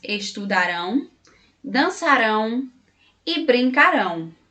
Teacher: Na palavra estudarão, a sílaba tônica é rão. Na palavra dançarão, a sílaba tônica é rão.